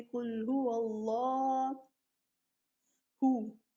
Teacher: قل ہو اللہ نہیں پڑھنا. اللہ کے لام کو لمبا کریں گے